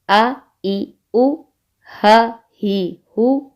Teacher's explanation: حمزہ، ہا گلے کے نیچے والے حصے سے ادا ہوتے ہیں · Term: اقصی حلق